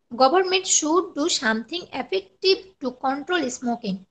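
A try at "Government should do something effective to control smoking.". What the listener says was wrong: এখন আপনার উচ্চারণটা ঠিক করতে হবে। আপনি ওই আপনার এস বা স আর স এর মধ্যে একটু সমস্যা হয়,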